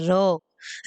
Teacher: वो व्यंजन जिसको बोलते हमारी जो जुबान है वो लुड़क जाती है वो होता है लुंठित व्यंजन इसका उदाहरण है र र बोलेंगे